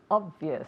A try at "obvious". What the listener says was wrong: Very good. Very good pronunciation.